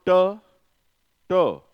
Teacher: टे साउंड बोलते हुए, टे साउंड बोलते हुए, टी, टी का ट, टे साउंड बोलते हुए टंग का टिप एंड ब्लेड टिथरीज से जाकर मिलता है।